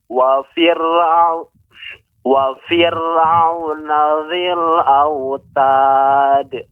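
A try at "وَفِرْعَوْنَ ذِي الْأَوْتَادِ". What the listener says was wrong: Ya, tanya disempurnakan pada panjangnya autad.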